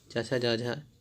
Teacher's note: चवर्ग के वर्ण का उच्चारण स्थान होता है तालु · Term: तालव्य व्यंजन